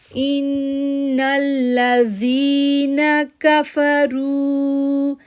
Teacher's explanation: زال soft letter ہے اور یا ساکن سے پہلے زیر ہے، اس لیے ہم اس کو 2 سیکنڈ کے لیے کھینچیں گے